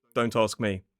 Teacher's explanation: if somebody asks you a question and you say quite flatly, don't ask me. That sounds really rude.